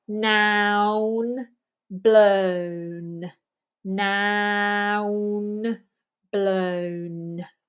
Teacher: And the N again is with the tongue pressing into that roof of the mouth on the front side.